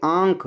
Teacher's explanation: देखो जब आप बोलेंगे आंख तो आपके नाक से भी आवाज आ रही है और मुख से भी आवाज आ रही है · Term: अनुनासिक वर्ण, अनुनासिक